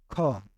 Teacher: ख अघोष वर्ण है, महाप्राण भी है, ठीक है, कंठ ध्वनि भी है और स्पर्श व्यंजन भी है